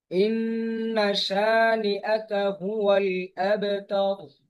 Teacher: শিন টান হবে এক আলিফ